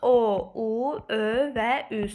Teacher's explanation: Dodaqlanan saitlərimiz O, U, Ö və Ü saitləridir.